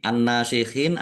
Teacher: Nun tasdid dibaca gunah atau mendengung. Ditahan biar tampak mendengung.